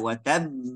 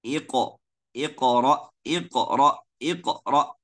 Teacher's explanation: sekarang ada yang baca watab tiba-tiba dua pita suara ditutup sampai kasih huruf hamzah